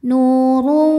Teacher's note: Huruf ra dibunyikan secara tafkhim karena ra berbaris dhammah tanwin. Maka ra dibunyikan dengan tebal.